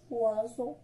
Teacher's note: مي سي لا لتر si la lettre S entre deux voyelles, il a qu'à la lettre S ما بين deux voyelles ولا ما بين deux voyelles فما كنطقوش S كيتنطق إز